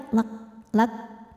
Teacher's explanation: jangan lupa keluarkan angin di huruf Kaf ya karena kalau kafnya sukun keluar anginnya itu terakhir belakangan jadi